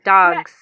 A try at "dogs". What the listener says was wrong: No, with the S on the end. Dogs. With the S on the end. Dogs.